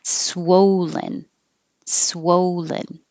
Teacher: So your lips get very small, swow, and stay small until you make the L.